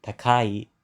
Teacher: takai is pronounced low, high, low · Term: pitch drop